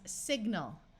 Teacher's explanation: Most of the time, AL at the end of a word takes on the muffled ul sound.